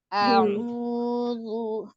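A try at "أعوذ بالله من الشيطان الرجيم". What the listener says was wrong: Tidak coba senyum dulu. Sambil senyum ucapkan tidak tidak dinaikkan hamzahnya. Satu harokat saja. Jadi kalau ragu pengucapan alifnya takut terlalu dalam menjadi tebal, maka senyumlah dulu ya. Senyum dulu punya ucapkan sambil senyumnya. Jadi jangan kaku. Begitu maka nampak tebal. Ketika dia tebal nanti tabrak ainnya ya. Seolah-olah bertasdid. Jadi sempurnakan hamzahnya. Hamzahnya saja. Ainnya sudah dapat. Hamzahnya saja ya.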